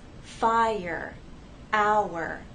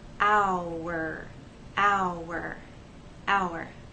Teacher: we have two vowel sounds and there is a gliding but there isn't a joining to make one vowel sound The Vow sounds remain separate here the first sound is i